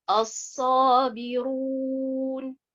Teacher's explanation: la première prononciation qui est as-sabiroun, la lettre ra, elle est beaucoup plus emphatique